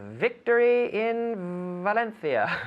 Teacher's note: so it's an f that is voiced with the vocal chords